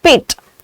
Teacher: Whenever these are coming as the first sound, p, t and k, all the three of them have common characteristic of being aspirated.